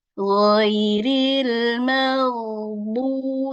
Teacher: Harus dipertahankan di makhrajnya di tenggorokan bagian atas. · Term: huruf ghain